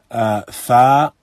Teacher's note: fa is recited by bringing the upper incisors down to the inside of the lower lip. When one recites fa, the upper incisors come down to the inside of the lower lip. · When one recites fa, the upper incisors come down to the inside of the lower lip. Fa, so the lips come together but they do not meet. Fa, the upper incisors meet the inside of the lower lip.